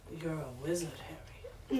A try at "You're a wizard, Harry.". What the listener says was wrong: No, you could be more growly.